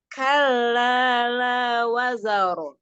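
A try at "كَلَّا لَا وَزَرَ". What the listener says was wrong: Ahsan, Masya Allah. Ya, dijelaskan hukum tajwidnya. Kalla.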